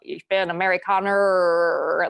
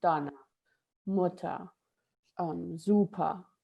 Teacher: you really don't put the R in there, and certainly not this, tongue rolling R. You just stop before the word really comes to the end. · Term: schwa sound